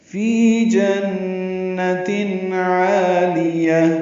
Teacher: فی یا مدہ ہے، دو حرکات لمبا ہے